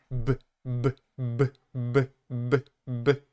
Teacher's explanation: you should hear a strong vibration in your throat, like you're using your voice to pronounce, to produce that sound